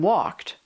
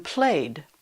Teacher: Sometimes it's T like in walked, and sometimes it's D like in played.